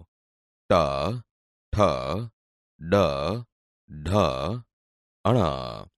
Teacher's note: બોલતી વખતે જીભ ઉપર દાંતના મૂળ ભાગને અડે છે, એટલે તે મૂર્ધન્ય વ્યંજન છે.